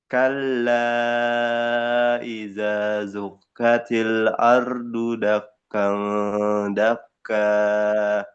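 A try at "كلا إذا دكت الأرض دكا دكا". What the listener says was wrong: duk itu bukan zuk, bukan zal tapi dal. Idza dukkatil.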